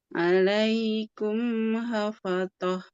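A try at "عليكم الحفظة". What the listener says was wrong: Ini huruf apa? Ya, berarti bukan hafatoh, tapi hafadhoh. Dhoh.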